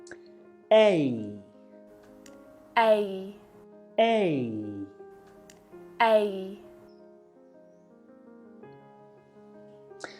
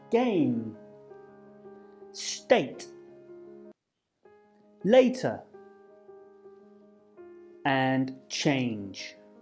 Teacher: both sounds are what we call unrounded, so we keep our lips stretched out like we're smiling, but our mouth will close a little as we move to the E sound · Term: A sound